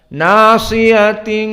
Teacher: karena dia bukan fathah tetapi imalah Al Kubro condong kepada kasrah